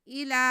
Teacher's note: لام پہ کھڑا زبر ہے، اسے ہم ایک الف کے برابر کھینچیں گے.